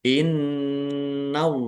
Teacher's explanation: Ditahan biar tampak mendengungnya. Allahnya dibaca tebal karena harakat di depannya fathah. Lam fathah berdiri mad thobi'i. · nun tasdid dibaca ghunah atau mendengung. Ditahan biar tampak mendengungnya.